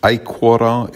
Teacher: in aequora, it's on the first syllable because the O is short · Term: accent or stress